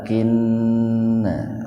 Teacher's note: Nun bertasdid itu gunna, mendengung, tahan dua ketukan.